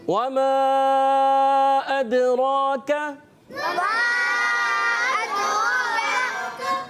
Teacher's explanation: واو کی ادائیگی جب کبھی واو ادا ہوتا ہے ہونٹوں کی گولائی سے ادا ہوتا ہے، ہونٹوں کو گول کرنا ہوتا ہے مگر مکمل طور سے ملانا نہیں ہوتا